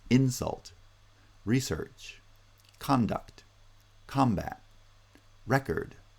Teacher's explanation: in the case of the noun use they get pronounced with initial stress